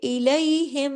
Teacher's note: اور جب میم تشدید کے ساتھ آتا ہے تو اس پر غنہ ہوتا ہے بڑا · جب غنہ ڈبل ہو گیا تو آواز دیر تک ناک میں چھپی رہی ، یعنی زیادہ دیر آواز ناک میں چھپی رہی، تو اکمل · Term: اکمل غنہ